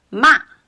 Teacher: The fourth tone ma it means to scold ma. So you can when I'm pronounced ma my voice dropped quickly